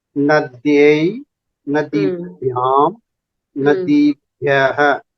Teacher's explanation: Ikara dirgha asti, tatra hrasva uchcharanam ma bhavet.